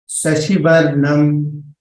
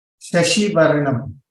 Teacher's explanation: The first sh was heard as Sashi. Slightly Sakara was heard. So that has to be clearer.